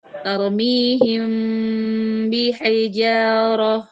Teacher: mim bertemu ba ya merapatkan kedua bibir tanpa tekanan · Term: ikhfa